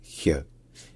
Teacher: c'est un son qui est un petit peu comme le Ch français, mais qui est au niveau du palais, donc plus en arrière. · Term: Ich-Laut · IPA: [ç]